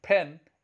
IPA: pʰen